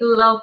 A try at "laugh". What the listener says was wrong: Laugh. laugh. laugh, laugh. No, because it sounds more like love, you know? Laugh.